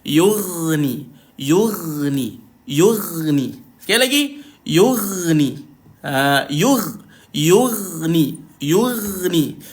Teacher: Dia ada satu sifat yang kita panggil sifat rakhawah. Ghain ni huruf rakhawah. Tuan-tuan perlu jalankan bunyi dia tuan-tuan. Jalankan bunyi dia bila dimatikan. Yughni. Jangan yughni.